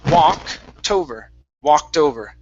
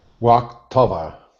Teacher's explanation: take that T and connect it to over.